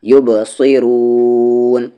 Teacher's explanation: فأن با ساکن ہے قلقلہ، یبصرون صاد ہیوی را بھی ہیوی اور لاسٹ میں مد عارض